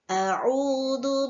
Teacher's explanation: Dibaca panjang 2 harokat dan dinamakan mad tabi'i